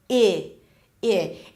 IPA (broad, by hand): ɪ